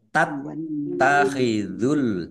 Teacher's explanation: dibaca dobel ada tasdidnya ditekan biar tampak dobelnya.